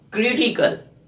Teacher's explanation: We are stressing on CRI, CRI, because it's a third from the last.